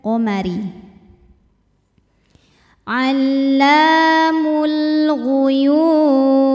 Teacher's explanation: sebab ada lam yang menghadapi huruf qamariah yaitu huruf ghain maka cara baca lam sukunnya ini adalah dibaca dengan jelas atau disebut dengan izhar